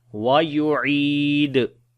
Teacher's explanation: we read from the middle of the throat, and then we long due to ya madda, and then also we make qalqala on the dal